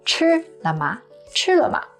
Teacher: 吃 to eat is the first tone high and flat, and 了吗 they are both neutral tone, which means there is no stress. So you say it quick and kind of quiet.